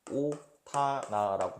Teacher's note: 네, 그래서 대표음 디귿으로 바꾼 다음에 이제 처음부터 설명하면 이렇게 되고 하나가 있는데, 시옷이 대표음 음절말 끝소리 규칙 때문에 음절의 끝소리 규칙, 음절말 평파열마 때문에 시옷이 디귿이 되는 거고 두 개 만나서 격음화가 돼서 오타나라고 발음이 되는 겁니다